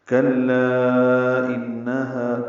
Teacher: کلا انہا، کاف باریک لام سے ملائیں گے، لا پہ مد منفصل ہے، الف مدہ کے بعد دوسری کلمے میں حمزہ آ رہا ہے، اس لیے مد منفصل ہے، ہم اسے 4 حرکات لمبا کرتے ہیں. انہا میں نون مشدد پہ غنہ ہے، آواز ناک کے بعد سے ملے جا کر 2 حرکات تک ٹھہرائیں گے.